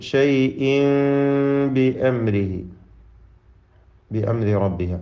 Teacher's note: ഷൈഇൻ എന്നതിലെ തൻവീനിനെ ഇഖ്ലാബ് ചെയ്ത് മീമാക്കി മാറ്റി മണിക്കണം. അപ്പോൾ ഇഖ്ഫാ എന്ന അതിൻ്റെ ഹുക്മ് സാക്കിന മീമിന് നൽകേണ്ട ആ അവ്യക്തമാക്കി മണിക്കലാണ് ഫലത്തിൽ ഇവിടെ വരുന്നത്.